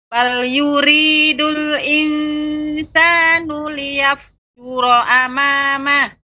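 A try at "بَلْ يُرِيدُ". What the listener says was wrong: Ya, masih banyak getaran ri. Jadi tidak yuri, bukan yuri, namun yuri, yuri. Ya, lebih sedikit.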